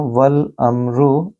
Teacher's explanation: मीम साकिन के बाद रॉ है, लिहाजा आपको गुन्ना नहीं करना।